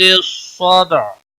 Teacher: صاد حروف مستعلیہ میں سے ہے پر پڑا جائے گا. دال ساکن پر قلقلہ ہوگا. عین وقف کی صورت میں ساکن ہوگا.